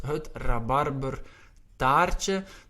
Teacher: in Flanders, Belgium, we roll our R's a little bit more than in the Netherlands.